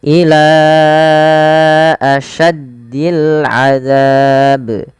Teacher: Nah, di sini awalnya ila dua harakat tapi karena bertemu dengan hamzah kita jadi panjangkan dia empat harakat. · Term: mad jaiz munfasil